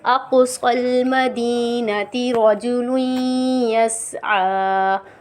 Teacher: قاف پہ قلقلہ ہوگا، کیونکہ قاف حروف قلقلہ میں سے ہے اور ساکن حالت میں ہے